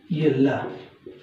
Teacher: इसमें होता क्या है, इसका जब उच्चारण करते हैं तो जीवा का अगला भाग जो कि मसूड़े से स्पर्श करके जो हवा का पार्श्व है वो दोनों साइड से निकलता है, इसलिए इसको पार्श्विक व्यंजन भी कहते हैं।